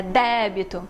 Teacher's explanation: débito tá com acento na primeira sílaba, então a primeira sílaba é o som mais forte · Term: tônico